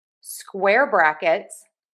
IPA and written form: ˈskwɛr ˌbræk.ɪts (Square brackets)